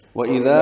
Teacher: وَإِذَا بِذَا نرمی سے ادا ہوگا، ذا الف مدہ ہے، دو حرکات لمبا کریں گے